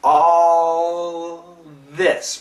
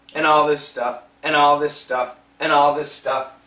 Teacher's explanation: Remember, the perfect L is between the teeth, and all this. Same position, the L and the TH, but the L is the strong sound, which means we're gonna hear more L than TH